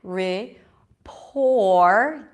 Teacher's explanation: the P is aspirated here, so there is a little H here.